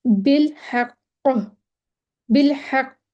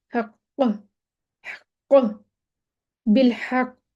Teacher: काफ का जो मखरज है वहां पे जाके अपने आवाज को हिला देना है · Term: कलकला